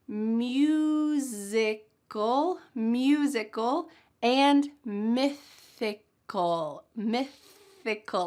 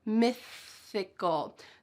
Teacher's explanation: my tongue is coming between my teeth here to make that TH sound.